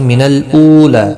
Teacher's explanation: واو مدہ ہے، ایک الف کی مقدار کے برابر کھینچیں گے